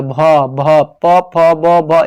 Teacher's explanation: भ भ प फ ब भ, ये सब ओष्ठ से बोलते हैं